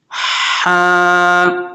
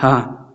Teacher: یہ حلق والا ہا ہے، یہ سینے والا ہا نہیں ہے، اس کو حلق سے ادا کرنا ہے